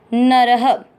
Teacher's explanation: तो विसर्ग को पढ़ना है ह